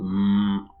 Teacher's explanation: Feel the vibration in your nose. That's a nasal sound.